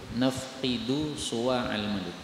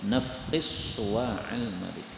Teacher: Ini dal ketemu dengan shad. Ini boleh diidghamkan menjadi nafqis suwa'al malik.